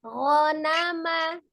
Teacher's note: Huruf ghain sifatnya al-jahru, jelas, tidak ada hembusan nafas mengalir ketika mengucapkan bunyi gho.